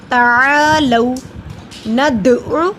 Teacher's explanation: दाल पे कलकला करेंगे, दाल जज़म की सूरत में है